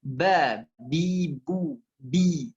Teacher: ba itu syiddah kuat dan makhrajnya di bibir